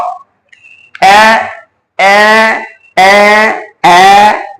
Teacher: আমরা যখন উচ্চারণ করি এ, জিহ্বাটা সামনে এসে পড়ছে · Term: সম্মুখ